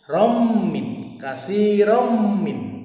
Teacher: Kemudian rommin, kasirommin, idgham bigunah, fathah tanwin bertemu dengan mim, harokat fathah tanwin dileburkan dan seolah-olah mim bertasydid. Membacanya disertai dengung.